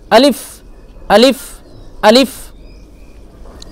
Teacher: আলিফ বলে চেপে ধরবেন না একটু বাতাসটা বের হয়ে যাবে